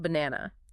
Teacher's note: the first and last a sounds are schwas